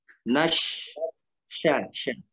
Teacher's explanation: Nash, syat, syat itu tengah lidah.